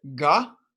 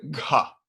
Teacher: first we get a ga and second we get the gha but with the aspiration